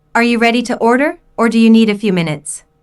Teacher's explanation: Notice the rising intonation on order and the falling intonation on minutes. The first choice is are you ready to order, and the second choice is do you need a few minutes?